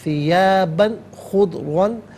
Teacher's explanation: حرف حلقی آ رہا ہے تو یہاں تنوین پر اظہار کیا جائے گا، اخفاء یا غنہ نہیں کیا جائے گا